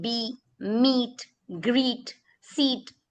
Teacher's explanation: instead of saying eh, it becomes automatically E. It makes the long vowel sound.